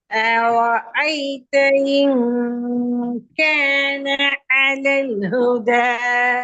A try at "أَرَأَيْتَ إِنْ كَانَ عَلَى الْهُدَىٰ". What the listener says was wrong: அலல் குதா சரி, அலல் குதா மாஷா அல்லாஹ், அந்த இடம் சரியா வருது. முன்னுக்கால வர அலிஃப் தான் ஐனுக்கு மாறுது. ஐனுடைய இடம் ஓகே, ஐனுடைய இடத்துல பிரச்சனை இல்ல. ஆனா அலிஃபினுடைய இடத்தையும் நீங்க ஐனுக்கு மாத்திரதான் பிரச்சனை ஆகி விளங்குதா?